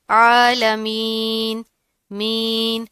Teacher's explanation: یا ساکن سے پہلے اگر زیر ہو تو وہاں پر کیا ہوتا ہے؟ یا مدہ. اس کو تھوڑا سا کھینچ کے ادا کرتے ہیں